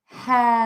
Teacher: I almost touch the top of my mouth with my tongue for that L. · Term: dark L